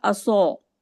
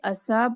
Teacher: صاد موٹا ادا ہوتا ہے اور سین باریک ادا ہوتا ہے، حالانکہ ان کے مخرج ایک ہی ہیں لیکن ان کی صفات میں فرق ہے۔